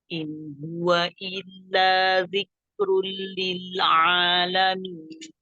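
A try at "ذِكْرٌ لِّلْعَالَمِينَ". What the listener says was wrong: Berikan sifat hams pada kaf. Zikrun.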